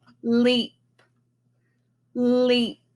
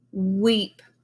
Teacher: notice how my tongue moved up and rested on my pizza spot behind my teeth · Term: L sound